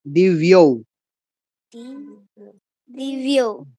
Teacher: দিব্য এটা অন্তস্থ ব, বর্গীয় না, ঠোঁট লাগবে না।